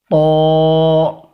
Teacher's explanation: تا کے اندر اور طوا کے اندر ذرا ڈیفرنس اس طرح کا ہے کہ ہم نے اس کو نرم انداز سے پڑھا اور جیبھ جس حالات کے اندر تھی اسی حالات کے اندر چھوڑا اور اس کو ادا کر دیا، مگر جب طوا کا نمبر آتا ہے تو طوا کو ادا کرنے کے لیے جیبھ کو ہم تالوے سے لگائیں گے